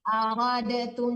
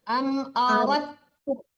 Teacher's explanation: Nggak boleh dipantulkan dalnya, langsung ditekan ke ta.